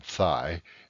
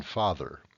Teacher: the voiceless fricative th, as in thigh, and the voiced fricative the, as in father